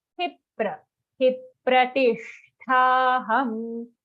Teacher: आघात on ही, very clear आघात